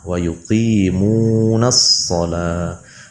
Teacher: Huruf shad adalah huruf sofir, yaitu cara membacanya ujung lidah ditempelkan kepada gigi seri bagian bawah, gigi seri yang bawah.